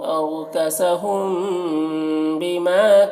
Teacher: میم ساکن کے بعد با ہے تو یہاں پر اخفاء شفوی ہوگا، اسے غنہ اور اخفاء کے ساتھ میں پڑھتے ہیں